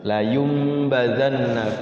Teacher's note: ada iqlab maka bibirnya rapat mim